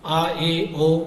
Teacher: अर्ध विव्रत अर्थात आधा मुंह खुले, आ, ए, ओ इन्हें बोलने पर आधा मुंह खुलता है।